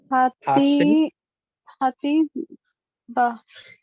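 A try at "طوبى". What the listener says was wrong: This is not T. What is this? Holum wow. What is the sign of holum wow? Yes, right. So ha to, then this just to,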